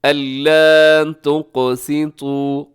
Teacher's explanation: क़ाफ मोटा भी है, साथ कलकला भी होगा क्योंकि क़ाफ के ऊपर जज़्म है